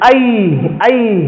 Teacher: ए नहीं बोलते हैं सही उच्चारण इसका आई है